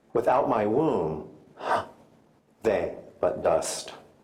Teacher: the central positioning of the comma creates a caesura, a dramatic pause, signaling an intake of life-giving breath and affecting the lines epitomizing juxtaposition.